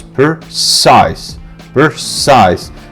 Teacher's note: Precise, stress on size